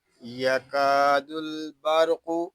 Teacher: یہاں کاف کو ہم ایک الف تک کھینچ کر پڑھیں گے کیونکہ یہاں الف مدہ ہو رہا ہے، لام ساکن ہے، اس کو سکون کے ساتھ ادا کریں گے۔